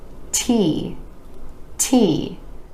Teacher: a tiny puff of air releasing with that in T T or else it might sound more like the D